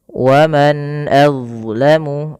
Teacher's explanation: Yaitu dengan memperjelas bacaan suara nunnya diperjelas dengan baik. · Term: izhar halqi